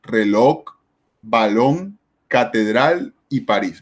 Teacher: Son las palabras que llevan el acento en la última sílaba. · el lugar donde se hace la mayor fuerza de acentuación o de pronunciación es en la última sílaba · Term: palabras agudas